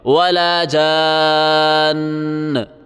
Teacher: وقفاً ولا جان، ولا جان. آخر میں تشدید دے کے پھر نون کو چھوڑنا ہے. ولا جان، اس طرح نہیں ہوگا.